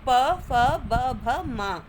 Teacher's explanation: ओष्ठय यानी होठों को मिलाकर जो वर्ण बनते हैं